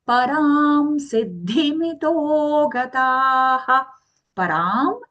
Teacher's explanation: Here we are using the ma, default ma sound for the anuswara, even though it is followed by the letter sa in the next word siddhi. Why? The reason is whenever the anuswara is followed by the letter sa in the next word, we use the default ma sound.